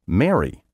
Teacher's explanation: Depending on where you're from, you may pronounce the adjective meaning happy, spelled M-E-R-R-Y, the verb meaning to wed, spelled M-A-R-R-Y, and the name spelled M-A-R-Y, all in the same way, Mary.